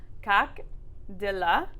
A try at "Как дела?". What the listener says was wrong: Yep, dila. instead of de or the, it's di.